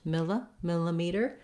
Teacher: this next letter i is going to say a schwa it's going to sound like uh that's because the second syllable is unstressed